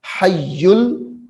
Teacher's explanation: ہا کو یا کے ساتھ ملانا ہے کیونکہ یا مشدد ہے. حیل، پھر یا کو لام ساکن کے ساتھ ملائیں گے.